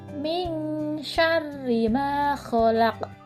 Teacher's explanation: perhatikan ayat yang kedua di dalam ayat kedua terdapat huruf Sin huruf syin dilafalkan dengan nafas yang menyembur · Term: huruf shin